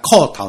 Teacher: 裤，就是三声，裤头就变第二声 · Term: 变调